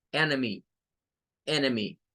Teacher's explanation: la e y la n es la primera sílaba y miren se va a leer como en con un sonido e de epsilon y es la sílaba tónica